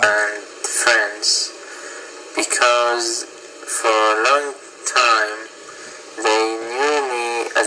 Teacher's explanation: So also you're speaking very slowly. Again, your tone is very flat. You're not raising or varying your tone at all. And also when you're pausing, you should pause maybe after 4 to 5 stressed syllables, but you're pausing almost after every word.